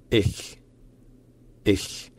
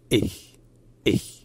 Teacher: la gorge est légèrement fermée pendant un petit moment pour créer une sorte d'attaque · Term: coup de glotte